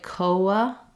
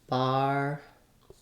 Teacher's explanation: when we say coa, we end up with kind of a gliding w sound and another schwa at the end.